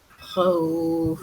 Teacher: Intinya yang namanya lin itu lembut, maka bunyinya au ataupun ai. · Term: mad lin